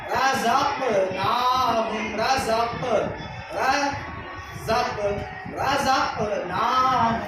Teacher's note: قلقلہ میں ایک لوٹتی ہوئی آواز محسوس ہوتی ہے